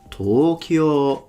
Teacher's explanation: So from low to high, it's a heiban pattern.